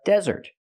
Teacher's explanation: put the stress on the first syllable it's a noun it's a countable noun this is a desert